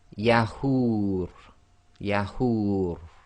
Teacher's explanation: the ra will go sakin, so the dhamma wow long vowel sound can go 2, 4 or 6 long